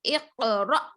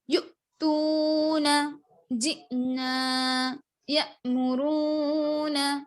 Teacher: حمزہ کے اوپر جزم ہو تو اس کو پڑھتے وقت جھٹکا دیں گے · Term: حمزہ ساکینہ